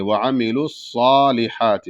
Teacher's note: اور صاد موٹا ہوگا، سیٹی کی آواز رہے گی، اور صاد پر کھڑا زبر ہے تو اس کو ایک الف کے برابر کھینچیں گے